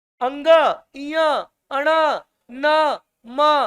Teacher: प्रत्येक वर्ग का जो पंचम वर्ण है, उनके उच्चारण में श्वास जो है मुंह के साथ साथ थोड़ा मोड़ा नाक से भी निकलता है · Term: नासिक्य व्यंजन